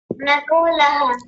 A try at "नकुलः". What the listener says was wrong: नकुलह नहीं, नकुलह। आप बड़ा ऊ बना रहे हैं जबकि इसमें छोटा ऊ है।